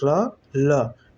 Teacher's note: जीभ जाके मसूड़े को टच कर रही है तो इसे दंत मूल या फिर वर्त्स भी बोलेंगे